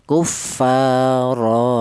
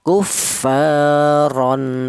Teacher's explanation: Jadi jika ada huruf apapun apabila ee berada di akhir kalimah artinya wakaf dan berupa tanwin fathah, maka di situ dibaca mad iwat yaitu panjangnya satu alif atau dua harakat atau dua ketukan · dibaca mat iwat, yaitu panjangnya 1 alif atau 2 harokat atau 2 ketukan